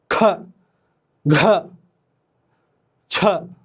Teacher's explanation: मैं ये बोल एक टाइम जरा सांस ले को ज्यादा बोलता हूं ख घ छ है ना तो इसके वजह से इसको महाप्राण